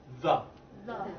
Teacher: Keep your tongue between your teeth, your upper and lower teeth, and you push your air through.